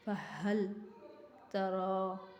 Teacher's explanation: را کو موٹا پڑھنا ہے، را کے اوپر کھڑی زبر ہے، اس کی وجہ سے ایک الف کے برابر کھینچ کے پڑھنا ہے